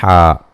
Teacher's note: حا کو اس کے مخرج سے نکالیں گے جو کہ وسط حلق ہے